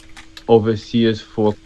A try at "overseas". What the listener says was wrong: I think you did over. You kind of deleted the R or turned it to a little bit of a W maybe. Ovo. I would do over.